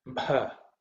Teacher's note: the first letter is Bha, which is an aspirated Bha sound, which is the fourth letter in the Pa Varga.